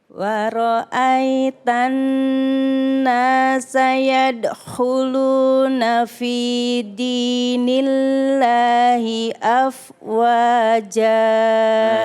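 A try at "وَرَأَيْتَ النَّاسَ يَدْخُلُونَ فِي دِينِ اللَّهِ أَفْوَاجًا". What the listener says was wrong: Ibu yadkhuluna itu jangan yadkhulu, jangan berhenti tapi nyambung Bu. Yadkhu. Beda kalau kita bilang yadkhu ya. Yadkhuluna ya.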